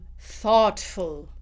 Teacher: I have unvoiced th, followed by aw, tf, thoughtful, right?